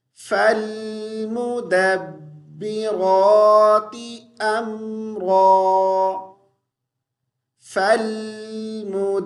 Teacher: با کو ہم مجہول نہیں پڑھیں گے، مدبے، بے نہیں پڑھیں گے